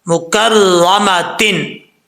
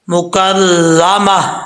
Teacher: तो मुकर्रमातिन से क्या पढ़ेंगे? मुकर्रमा, आखिर में हा की आवाज़ आना लाजमी है